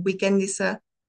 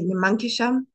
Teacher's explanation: light modification from alveolar to post-alveolar consonant, disregarding the vowel quality